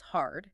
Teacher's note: There's a strong R sound involving curling your tongue.